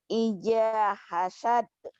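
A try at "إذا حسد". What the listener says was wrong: Idza dengan ija. Idza. Idza hasad.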